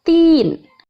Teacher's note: Ini dinamakan bacaan matobi'i karena ada ya sukun didahului oleh kasroh dan cara membacanya panjang 2 harokat